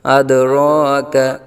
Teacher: ساکن سے بدلا گیا۔ آگے وَمَا أَدْرَاكَ، مد منفصل کا قاعدہ دال حروف قلقلہ میں سے ہے، قلقلہ خوب ظاہر ہوگا ، أَدْرَاكَ کاف بریک، أَدْرَاكَ را کو پر پڑا جائے گا،